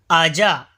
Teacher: जीम जबान के दरमियान और ऊपर के तालू के दरमियान से अदा होता है